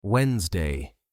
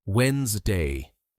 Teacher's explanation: Almost every learner, when they see Wednesday, they want to pronounce it as Wednesday, with 3 syllables, but in real English, that middle NES sound disappears. The correct pronunciation is Wednesday, just 2 syllables. Repeat with me slowly.